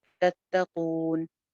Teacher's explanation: کون کے اوپر ہم واو مدہ پہ مد عارض لگا سکتے ہیں. اس کو مد عارض کے ساتھ پڑھ لیجئے 2 سے 3 الف لمبا کر کے